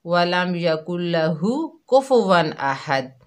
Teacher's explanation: ہا جو ہے حلق کے درمیان سے ادا نہیں ہوتی، دال پر کلکلا نہیں ہوتا